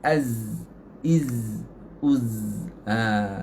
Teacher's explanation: Lebah saja. Az, iz, uz. Tapi jangan kasar. Dia nipis.